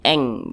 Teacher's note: disamarkan kemudian juga didengungkan akan tetapi dia di sini ab'ad jadi kadar dengungnya itu dia lebih tinggi lebih dominan jadi lebih condong berbunyi Eng